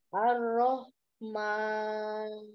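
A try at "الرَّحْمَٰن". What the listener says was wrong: Masih. Rohnya dialirkan. Jangan ar-roh. Tetap ar-Rahman.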